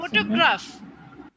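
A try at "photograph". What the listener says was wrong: ফটোগ্রাফ, গ্রাফ, ফটোগ্রাফ। এই যে তুমি গ্রাফ আটা বলছো, এটা ছোট হচ্ছে না খুব? ফটোগ্রাফ, এটা আটা প্রায় মানে খুব তাড়াতাড়ি পাস করে যাচ্ছি। ফটোগ্রাফ, আমরা গ্রাফের পরে যে মাঝখানে যে আ সাউন্ডটা, যে ভাওয়েল সাউন্ডটা, সেটা আমরা খুব শর্টলি বলে যাচ্ছি।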